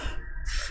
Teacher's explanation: जो खट्टी सा है इसको जब आप लोग सा बोलेंगे, अपने जीभ को थोड़ा सा घुमा करके रोल करके तालु से टच करके बोलेंगे तब आपका ये वाला सा निकलता है, तो ये आपका मूर्धन्य होता है।